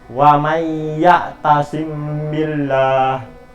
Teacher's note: apabila ada huruf mim mati bertemu dengan ba. Cara membacanya yaitu dibunyikan samar-samar.